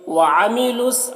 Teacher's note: عین کو حلق سے ادا کریں گے اور یہاں پر لام کو صاد سے ملا کر پڑھیں گے۔